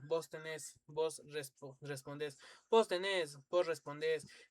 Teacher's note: Pero a diferencia de España, en los lugares donde se se hizo común el voz, se acompañó con el verbo flexionado en tercera persona singular acentuado en la última sílaba